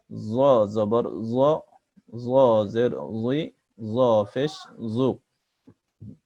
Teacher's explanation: জিহ্বার আগা সামনের উপরের দাঁতের আগা থেকে জ অক্ষর কণ্ঠস্বরকে মোটা করে পড়তে হয়।